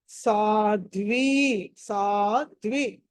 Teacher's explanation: ఇక్కడ ధ అన్నది మహా ప్రాణము